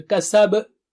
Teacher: Kasab, you have qalqala at the end